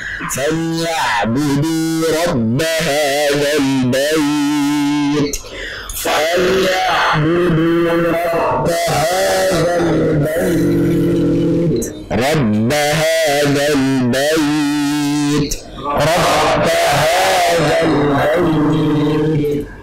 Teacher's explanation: tidak ada satupun huruf mim maupun huruf nun, sehingga ketika kita baca saat kita tanpa ditutup hidungnya maupun ditutup hidungnya itu sama saja, suaranya sama saja, jangan sampai berbeda.